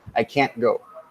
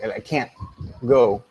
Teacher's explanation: The glottal stop replaces the T in spoken English.